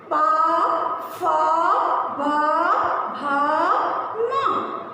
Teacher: प वर्ग का उच्चारण करते समय हमारे जो दो होठ हैं वही आपस में टच होते हैं।